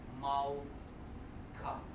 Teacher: See, since you have to skip pronouncing this sound, you have to accentuate on the last syllable, and you have to split it into malka, almost like a double K sound.